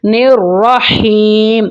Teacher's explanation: را کے اوپر زبر آ گئی ہے، را کو موٹا کر کے پڑھیں گے۔ نررحیم، ہا حلق کے درمیان والے حصے سے ادا ہوگی۔